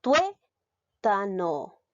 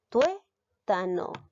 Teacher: ¿Dónde lleva la mayor fuerza de voz? ¿En qué sílaba? Tuétano. En la sílaba tué. En las penúltima sílaba.